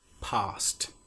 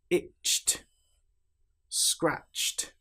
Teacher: You will notice in these examples that we don't pronounce the e sound at all. The t is almost like an extra consonant that links directly to the consonant before it.